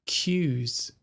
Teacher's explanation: there is a gap between the top of the mouth and the top of the tongue. And that way the air can vibrate through it for the Z sound.